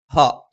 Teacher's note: ഹ തൊണ്ടയുടെ താഴ്ഭാഗമാണ്